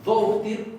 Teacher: Esa D no sería la D que va con el cortecito en la parte No, de arriba. esta D es tirando a oclusiva.